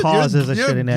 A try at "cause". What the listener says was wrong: You're elongating the Oz. Cause. Cause.